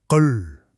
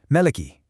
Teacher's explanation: Notice how that light, crisp ki sound is made on the hard palate? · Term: meadow sound